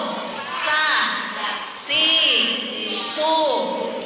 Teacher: Makhorijul huruf sa sama dengan makhorijul huruf za, alias ujung lidah kita nempel ke gigi seri kita sa. Jadi ada dorongan angin kuat dari dalam.